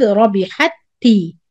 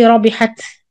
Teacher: The first تاء merged completely into the second تاء. So no تاء, you join the حاء with the تاء شد. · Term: إدغام